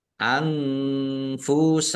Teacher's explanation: nun sukun bertemu dengan huruf fa bacaan ikhfa dibaca samar-samar.